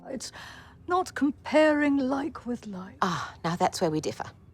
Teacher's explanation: Anderson brilliantly reflected the essence of the controversial politician with her lower register and hesitant breathiness